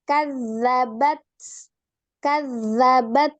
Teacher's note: Nah, huruf ta, hati-hati, memiliki sifat siddah dan alhams. Maka, seperti yang disampaikan tadi, dahulukan siddahnya, baru alhams.